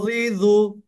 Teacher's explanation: এখানে দেখেন জিহ্বাটা কোথায় দেখেছেন? জিহ্বার আগাটা উপরের দাঁতে, কিন্তু উপরের দাঁতের আগার সাথে যুক্ত হচ্ছে। জিহ্বাটা একটু কিন্তু বের হয়ে আছে, মুখের বাইরে না, মুখের মধ্যেই, কিন্তু এই দাঁত থেকে একটু বাড়িয়ে আছে জিহ্বাটা।